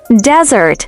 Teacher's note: with a stress on the first syllable